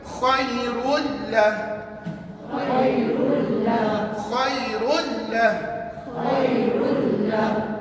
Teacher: Tanwin ni dah masuk dalam lam, bermakna tanwin tidak boleh dibunyikan langsung. · Bukan khairun, dia kena baca khairul, masukkan dalam lam. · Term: idgham